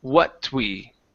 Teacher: there's no extra vowel after what